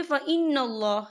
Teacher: یہاں نون مشدد ہے تو یہاں پر غنہ بھی ہوگا، اور یہاں پر اللہ کا نام جو ہے پر پڑھا جائے گا کیونکہ اللہ کے نام سے پہلے زبر ہے۔